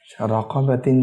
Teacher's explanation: را پر زبر ہے، اس وجہ سے اسے موٹا پڑھیں گے